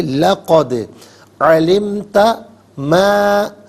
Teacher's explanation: لقد دال ساکن ہے لیکن قلقلہ ہوگا تو آواز لوٹتی ہوئی محسوس ہونی چاہیے